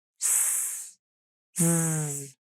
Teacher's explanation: They also share the same type of air release or manner. The air release is noisy, turbulent, and constant. S, z. But where they differ is voicing.